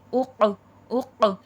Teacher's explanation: حرف خلخلہ ہے، آواز پلٹ کر سنائی دے گی